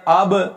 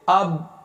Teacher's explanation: حمزہ زبر با اب کو 2 صورتوں میں پڑھا جا سکتا ہے، یعنی ایک ہے کہ ہم با کو ہلا کر پڑھیں اب، اور دوسرا ہے کہ ہم با کو روک دیں